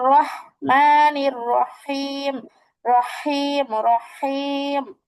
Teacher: হায়ের মাখরাজ কণ্ঠের মাঝখান থেকে